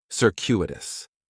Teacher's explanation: In the first syllable, that C is going to have more of an S sound, circuitous. The stress is going to be on that second syllable · The next adjective, which is another one that I really like, is circuitous, and circuitous has 4 syllables, and there's a few things going on with the pronunciation. In the first syllable, that C is going to have more of an S sound